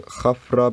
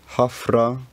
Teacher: this F sound made with both lips becomes a modern English F sound made with the top teeth and bottom lip